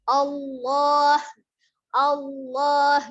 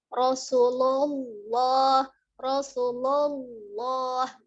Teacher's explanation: lamnya dibaca dengan tebal dengan menekan makhraj ya, tetap bukan juga dengan mengangkat pangkal lidah seperti memang huruf-huruf yang bersifat tebal ya.